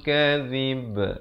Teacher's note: zib diberikan lantunan qalqalah. Diberikan hamas angin.